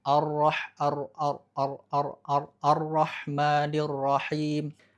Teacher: ketika ro bertasydid justru getarannya harus ditahan, agak ditahan, jangan sampai terlalu banyak bergetar